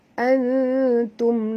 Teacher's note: Sammaitumu asli ha antum ha panjang ya, mat jaiz 4 hingga 5 harakat. Antum nun mati bertemu ta, kena sembunyikan bunyi nun ke dalam ta disertai dengung ikhfa hakiki.